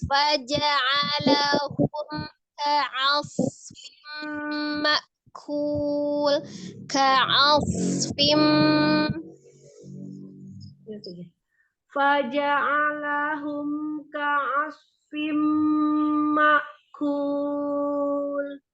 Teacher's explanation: sofirkan sodnya, ainnya tidak ditebalkan.